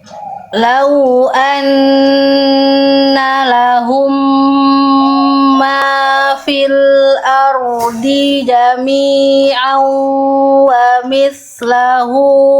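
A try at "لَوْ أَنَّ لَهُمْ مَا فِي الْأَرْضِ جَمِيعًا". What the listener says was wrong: Rohnya bagus dapat tapi dotnya lepas. Dotnya lepas ya. Dotnya dibaca harokatnya ya.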